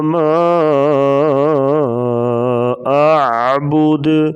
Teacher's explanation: ما پہ جو مد ہے مد منفصل ہے، اسے 3 سے 4 الف کے برابر مد کریں گے۔ حروف مدہ کے بعد حمزہ دوسرے کلمہ میں ہو تو مد منفصل ہوتی ہے۔